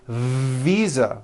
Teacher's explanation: I said visa with an unvoiced F. I should have said visa with a voiced V.